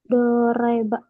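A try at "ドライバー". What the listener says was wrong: Panjang banyak.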